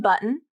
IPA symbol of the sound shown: ʔ